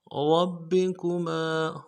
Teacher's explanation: रा को मोटा करना है, बा के साथ मिलाना है, बा के ऊपर तशदीद है, जोर देंगे। रब्बी, अगले बा को नर्म से अदा करना है, काफ को नर्म से अदा करेंगे, मीम के साथ अलिफ मद्दा है, एक इंतजार में खींचेंगे।